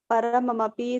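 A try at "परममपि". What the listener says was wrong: కాదు మాతాజీ, పరమపి. పరమం కాదు, పరమపి.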